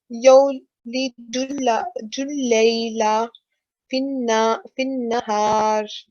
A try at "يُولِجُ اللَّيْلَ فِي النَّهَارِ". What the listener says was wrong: Okay, good try. It's yulijul, not yo. So you can see dhamma.